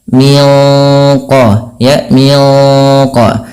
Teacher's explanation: Kita bacanya nunnya disamarkan langsung ke huruf qof yang dia menebal. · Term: ikhfa hakiki